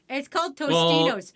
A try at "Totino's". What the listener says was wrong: the S is silent.